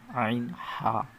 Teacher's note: হালকের কণ্ঠনালীর মাঝখান হতে উচ্চারিত হয়